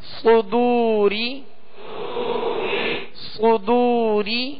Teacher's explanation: ہونٹوں کو گول کریں گے تو پیش صحیح ادا ہوگا، صدو۔ را زیر ری، را کے نیچے زیر ہے، را کو باریک پڑھیں گے